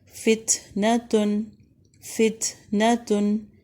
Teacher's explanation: تا کے اوپر ہمس کریں گے